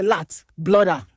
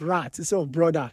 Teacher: They exchange their L for R, so they say lat, blooder instead of rat, instead of brother